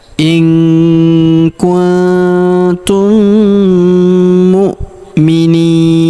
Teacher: Karena di depan huruf ni terdapat ya sukun sebelum huruf pemberhentian. Dan huruf pemberhentian huruf na kita sukunkan atau kita matikan.